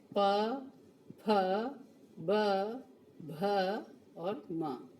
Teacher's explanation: प वर्ग जो होता है वो उसका उच्चारण ओष्ठ यानी होठ से किया जाता है। इसलिए ये ओष्ठ्य ध्वनि कहलाती है।